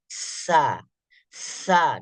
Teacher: duluan terhembus anginnya baru kemudian suaranya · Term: huruf Hamas